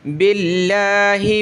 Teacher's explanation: زیر ہے تو لفظ اللہ کو پتلا کریں گے